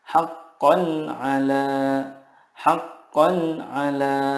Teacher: Karena huruf-huruf izhar di sini makhrajnya adalah dari tenggorokan. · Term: izhar halki